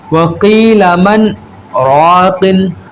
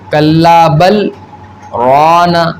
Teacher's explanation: یہاں ہمیں آواز کو روک کر کے سانس لیے بغیر آگے بڑھنا ہے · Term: سکتہ